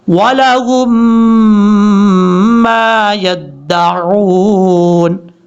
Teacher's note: ہا کو میم کے ساتھ جس میم کے اوپر شد ہے اس کے ساتھ کنیکٹ کیا جائے گا اور غنہ بھی کیا جائے گا